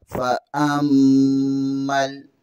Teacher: फा के ऊपर ज़बर है, हमज़ा ज़बर को मीम के साथ मिलाएंगे। मीम में शद्दत है, यहाँ पर गुन्ना लाजमी होगा। और मीम ज़बर को लाम के साथ मिलाएंगे।